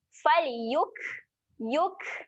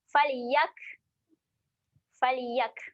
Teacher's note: Kaf ketika mati sifat dia kena keluarkan angin. Dia kena keluarkan angin. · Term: huruf kaf